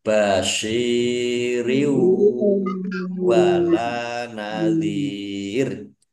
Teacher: Kasroh tanwinnya tidak dibaca, ya langsung masuk ke huruf wawu. Mendengung wawu ditahan. Jadi kalau mendengung itu ditahan biar tampak dengungannya.